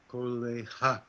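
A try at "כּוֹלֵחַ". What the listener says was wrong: Okay, so try it again and see if you can get this vowel sound before the consonant sound. You said cha. Say ah and then ch.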